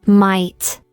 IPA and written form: maɪt (might)